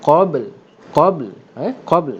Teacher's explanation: Pertama matinya ba, yang kedua matinya lam kerana berhenti. Maka pastikan bunyi ba lebih kuat daripada lam.